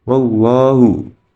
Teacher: Cara membacanya lafadz Allah dibaca tebal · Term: tafkhim